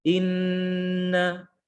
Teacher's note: huruf yang memiliki sifat gunnah atau sifat dengung keluar dari rongga hidung